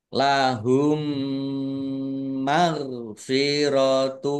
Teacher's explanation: Ya, dibaca mendengung ditandai mimnya ada tasdidnya. Mim tasdid dibaca mendengung atau ghunah ditahan kira-kira dua harakat biar tampak dengungannya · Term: gunah